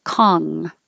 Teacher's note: it looks like an N, a regular N you would make in the front of your mouth, but it's not. It's an NG.